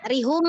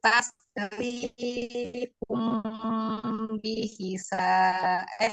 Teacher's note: Kan bacanya rihum. Nah, ri-nya itu panjang